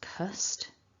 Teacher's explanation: in syllable 2 you can see that we've got a schwa and the syllable is pronounced cussed and so it's just an uh it's that a weak vowel